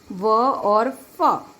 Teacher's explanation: दंत्योष्ठ निचले होंठों व ऊपरी दांतों से, दंत और ओष्ठ दोनों, व और फ।